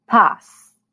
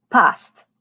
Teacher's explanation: the t is deleted after the s